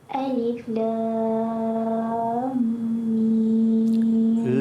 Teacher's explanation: Yang lam tu 6 harakat dan nak masuk ke dalam mim yang kedua tu 2 harakat.